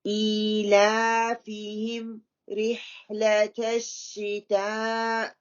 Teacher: مد متصل جہاں پہ ہو رہی ہے کیونکہ حمزہ جو ہے اس ورڈ کا حصہ ہے تو اس کا ہم 4 اور 5 کاؤنٹ اس کو لمبا کریں گے · حمزہ کے نیچے بھی کھڑی اسٹرننگ کسرہ ہے تو اس کو ٹو کاؤنٹ کریں گی